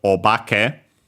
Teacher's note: its accent, yeah, accented on the ba, so low, high, low